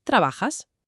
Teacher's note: entra en juego una consonante, eh, una fricativa sibilante, un sonido que históricamente señala la segunda persona, la letra S.